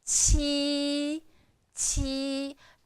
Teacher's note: There is the the kind of air goes through your teeth, and it's first tone, flat